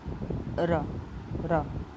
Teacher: लुंठित व्यंजन तो वायु जीभ के ऊपर से लुढ़कती है, र। लुंठित व्यंजन कौन सा हमारा, वायु जीभ के ऊपर से लुढ़कती है, र।